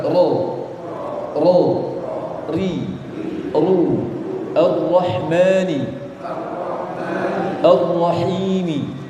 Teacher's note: huruf ro itu ada sifat takrir namanya, getaran, dan getarannya cuma dua.